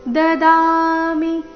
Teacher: ದದಾಮಿ ದ ದೀರ್ಘ ಮಿ ಹ್ರಸ್ವ